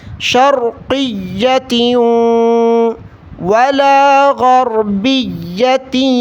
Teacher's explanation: واو پر تشدید ہے، تا کو واو کے ساتھ ملائیں گے ، شرقیۃ ولا غربیۃ، پھر یا پر تشدید ہے تو یا